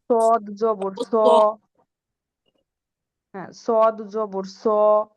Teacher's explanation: সদ যখন আমরা উচ্চারণ সদ করবো তখন আমরা মুখটা গোল করে ফেলবো একেবারে, হ্যাঁ, ঠোঁটগুলা।